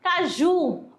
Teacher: Forte, coloca força na última sílaba. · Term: oxítona